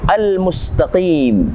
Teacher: harokat berhukum tajwid Mad Thobi'i al-mustaqim di sini ada alif lam Alif Lam Qomariah yang kita baca jelas alif lam nya tidak kita hilangkan